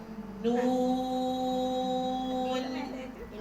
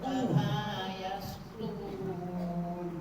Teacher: Dia tak cukup satu harakat tu panjang. Dengung sekadar dengung yang pendek saja, yang sekejap. Kan kita nak raikan dengung asliah dia tu, dengung yang asal dia tu.